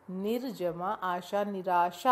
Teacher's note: विसर्ग र में बदल गया र में आ जुड़ा तो रा हो गया